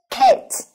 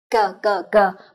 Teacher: Đây là âm bật hơi và âm vô thanh.